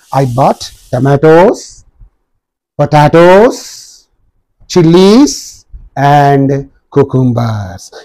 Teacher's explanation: when you mentioned the last one you come down falling intonation is there